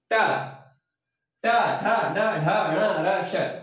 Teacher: जीभ जो है मूर्धा को स्पर्श करती है, ऊपर की तरफ जाती है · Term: मूर्धन्य